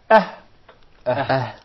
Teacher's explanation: The farthest side of the throat, which is Aqsa al-Halq.